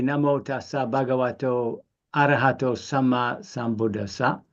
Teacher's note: all those vowels are open vowels, a bit like Italian, really. They're very open vowels.